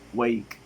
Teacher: According to voicing, it is voiceless. According to the place of articulation, it is velar. According to the manner of articulation, it is stop.